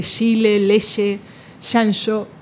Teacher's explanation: uno pronuncia una africada eh más fricativa eh que es característico de de un lugar de donde viene